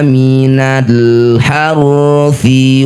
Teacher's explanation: huruf ha berasal dari tengah tenggorokan, ha berkumpul dengan ain ya. Ini punya sifat namanya hamas, mendesirkan udara. Ha udaranya lembut banyak.